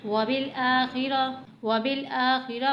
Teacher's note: واو کو جلدی پڑھنا ہے، با کو لام سے ملانا ہے ، وبل، اس حمزہ کو تھوڑا سا کھینچ کر پڑھنا ہے،